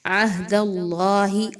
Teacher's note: اللہ کے حرف سے پہلے دال پر زبر ہے تو اس لیے اللہ کا حرف جو ہے اس کو پر پڑھا جائے گا